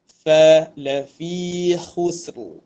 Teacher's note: Yang ketiga adalah huruf fa dinipiskan. Fa bukan pa.